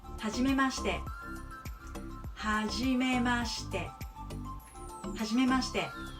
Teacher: So if I pronounce by itself, she, but in the word, you pronounce sh. It doesn't have a vowel.